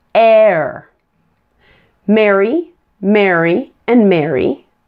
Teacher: An air sound is a blend of the short E plus the R